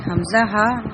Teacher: حمزہ اور ہا اقصی حلق یعنی کہ سینے کی طرف والے حصے سے نکلتے ہیں